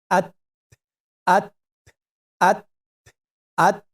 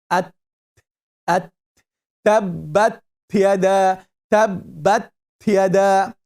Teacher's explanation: so with the art we are using the tongue at so it's the front part of the tongue touching the root of upper teeth